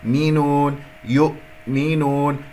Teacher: لا أسحب ضمة الياء إلى الهمزة الساكنة، ثانيا لا أقلقل الهمزة يؤمنون لأنه لم يحدث عندي انقفال الأوتار الصوتية، فانتبهوا يؤمنون، هذا هو المقطع، اجعلها مقطعين.